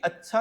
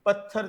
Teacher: पहले अलप प्राण है फिर महाप्राण है। पत्थर जैसा शब्द, तो यहां पर भी आप गौर करें, पहले अलप प्राण है फिर महाप्राण है।